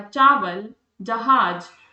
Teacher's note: जीभ ऊपर की ओर उठी और तालु से लगी। इसलिए इन्हें तालव्य व्यंजन कह दिया मैंने।